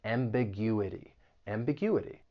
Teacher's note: The word has 5 syllables, and if you want to learn something about syllable stress, when the word ends in ity, the stress is going to be on the third to last syllable, that U.